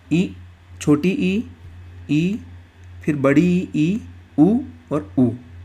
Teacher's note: मुख हमारा लगभग बंद रहता है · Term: संवृत स्वर